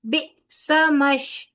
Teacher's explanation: बे हमजा के ऊपर जसम है लिहाजा इसकी अदायगी झटके के साथ होगी